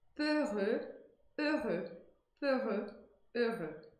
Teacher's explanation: o som que eu vou emitir nas duas sílabas é o mesmo, é um som de E, e que para eu pronunciar esse som de E, eu tenho que arredondar os lábios. Não precisa exagerar, mas no começo, quando estiver aprendendo, pode exagerar, não tem problema.